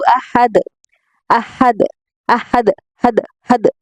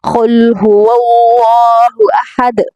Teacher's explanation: دال پر ہم نے قلقلہ کرنا ہے